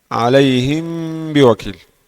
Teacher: Mim bersukun yang samar pada huruf ba. Pada huruf ba berharakat kasrah. Berharakat kasrah dengan gunna dua harakat. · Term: ikhfa syafawi